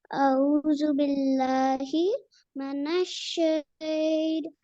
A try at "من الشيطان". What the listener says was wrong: Minash. Okay, Minash, not Manash.